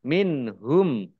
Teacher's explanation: nun sukun bertemu dengan huruf ha bacaan zhar khalqi baca jelas